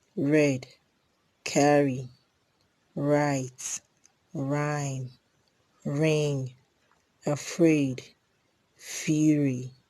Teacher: Then there's a post-alveolar frictionless consonant. This sound is a post-alveolar frictionless consonant sound · This sound is a post-alveolar frictionless consonant sound, and these are the examples: read, carry, write, rhyme, ring, afraid, fury.